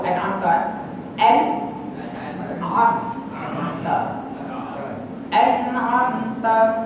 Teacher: ta ni jangan bunyi hamas, jangan bunyi angin · Huruf ta ni mamno, dilarang daripada kita keluarkan angin. Apa kita sebut an'amta, bila bunyi angin maknanya salah.